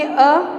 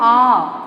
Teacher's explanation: ठीक है, इनको बोलने में ज़्यादा समय लगता है। देखो आप अ बोल के देखेंगे अ और बोलेंगे हम आ, तो दोनों में समय का अंतर है। ठीक है, ये द्विमात्रिक समय लेता है, इसलिए इसको द्विमात्रिक कहा जाता है, यानी कि 2 वर्णों के बोलने के बराबर का समय इस एक वर्ण को बोलने में लगता है, इसलिए हम इसे कहते हैं द्विमात्रिक स्वर।